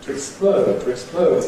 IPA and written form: tu ɪkˈspləʊd (to explode)